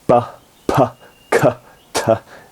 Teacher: plosive sounds, ones where you stop the airflow and then suddenly release